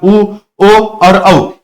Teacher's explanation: ये सभी स्वर जो है पशु स्वर यानी जीभ का पिछला हिस्सा जो है इस्तेमाल इसमें किया जाता है।